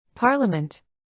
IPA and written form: ˈpɑːr.lə.mənt (Parliament)